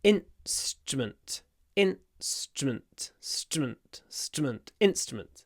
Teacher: And because of the s, which is unvoiced, the in gets clipped.